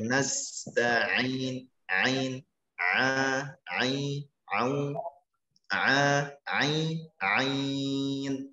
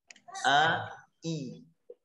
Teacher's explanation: huruf ain sangat dekat dengan hamzah bunyinya. Makanya perlu untuk sedikit ditekan sehingga suara menjadi agak sedikit memanjang. Karena salah satu sifat ain adalah bainiyah atau tawassut, suara memanjang.